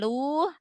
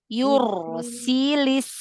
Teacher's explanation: Hati-hati, salah harokat pada huruf lam. Bukan lu, tapi li.